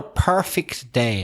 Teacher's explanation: you stress the first syllable